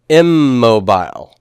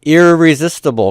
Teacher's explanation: the N assimilates to the consonant after it and becomes a copy of it in mobile in mobile and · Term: assimilation